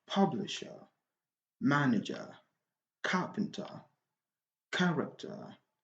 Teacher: when you have a noun in English and in with ER normally the stress is on the first syllable